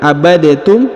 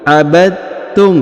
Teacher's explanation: huruf Dal diileburkan ya masuk ke huruf ta ya abadum Jadi bukan abadtum tapi abadum ya langsung dileburkan huruf